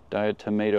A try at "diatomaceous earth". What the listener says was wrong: No, not tomato earth.